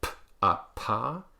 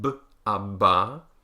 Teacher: the voiceless ones, p, t, and k, are all aspirated, meaning that there's a big puff of air that comes out